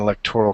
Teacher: the accent is on the second not the third syllable and there is no I in it not electoral but by